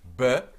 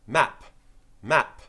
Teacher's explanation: you can hear the vibration B and your lips are involved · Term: voiced